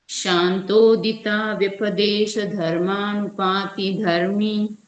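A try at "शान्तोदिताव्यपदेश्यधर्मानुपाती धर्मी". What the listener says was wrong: बहुत बढ़िया जी, नेक्स्ट आइए।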